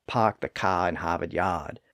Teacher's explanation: It's the Boston accent that so many people like to mimic when they say, "Park the car in Harvard Yard." Well, many scholars think that that tendency to drop the R sound after a vowel in parts of New England can be traced back to those early settlers from eastern England. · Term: non-rhotic accent